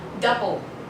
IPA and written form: ˈdʌbl (double)